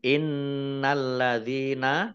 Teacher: nun tasdid dibaca hunah atau mendengung, ditahan 2 harokat. Lamnya alladzina, lamnya dibaca double, ada tasdidnya.